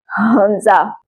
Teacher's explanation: हमजा को हलक के आखिरी हिस्से से अदा करना है, हलक के किसी भी हिस्से पर जोर दिए बगैर